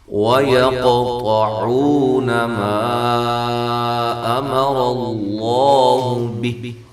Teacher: قاف کو قلقلہ، طا کو موٹا، قاف بھی موٹا،